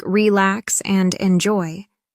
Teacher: in two-syllable verbs like relax and enjoy, the stress is on the second syllable